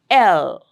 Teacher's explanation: So that's the manner in which uh this the L sound is produced. It is lateral. The sides are open. They don't touch. And that's uh that's a place through which the air is let out.